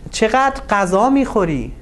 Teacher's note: So, and in that case, the stress goes on the second part of the sentence, and you have a rising intonation.